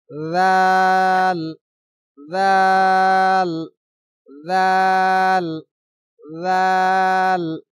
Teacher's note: জাল চার আলিফ পরিমাণ লম্বা হবে জাল উচ্চারণ হবে নরম উচ্চারণ